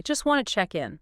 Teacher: the speaker doesn't pronounce the T sound in either word. Not in just and not in wanted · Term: consonant reduction